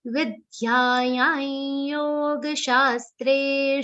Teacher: Vidyayam, because Anuswar is followed by ya. The pronunciation of Anuswar will be a nasal ya consonant.